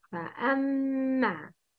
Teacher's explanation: Make the sound of Ghunna with two beats